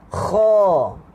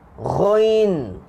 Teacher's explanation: Huruf kha dia satu tingkat atas sikit daripada huruf ghain. Satu tingkat saja.